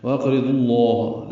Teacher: لام اسم جلالہ کو پر پڑھیں گے۔